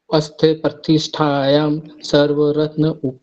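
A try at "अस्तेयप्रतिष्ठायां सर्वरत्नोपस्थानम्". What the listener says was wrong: फिर गलती कर ग आप उ कहां पर है इसमें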